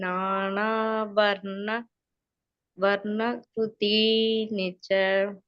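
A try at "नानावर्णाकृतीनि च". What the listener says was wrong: வர்ணா வர்ண இல்ல, க்ருதீனி ச. பகவான் சொல்லு, க இந்த க கிளியரா வரணும்.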